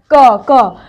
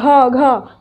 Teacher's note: के वर्ग में यह जितने भी शब्द है ये कंठ से बोले जाएंगे